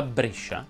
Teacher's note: brescia si pronuncia con la è chiusa